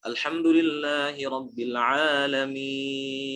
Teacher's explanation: Masuknya hukum mad lazim. Mad lazim 6 harokat. Boleh dibaca 6.